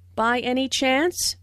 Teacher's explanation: Notice the rising intonation, which is used in yes/no questions to confirm that something is true.